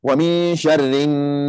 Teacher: Wajibul ghunnah ataupun yang panggilkan di sini ghunnah harakatain ghunnah harakatain, wajibul ghunnah ataupun panggilkan nun musyaddadah, hukmuhu ghunnah harakatain, hukum dia kena baca wajibul ghunnah, wajib dengung dia 2 harakat